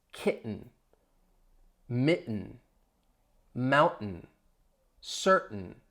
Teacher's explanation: with each of those words, kitten, mitten, mountain, certain, you hear me pronouncing that glottal stop.